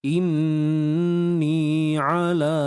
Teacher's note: Qul inni ala, huruf ain tengah kerongkong ni kita kena sempitkan. Inni ala, la mat asli dua harakat, ada alif mat kecil sebelumnya baris atas.